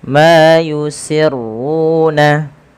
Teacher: Ma di sini dipanjangkan dua harakat yusirruna runya tebalkan yusirruna dan pada lafal ru juga kita panjangkan